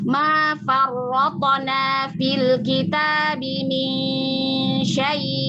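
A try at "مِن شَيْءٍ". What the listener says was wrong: Ustazah, syai cuman gitu doang tuh. Ya naber tuh gini Ustazah. Min syai. Nah, kayak diangkat sedikit suaranya.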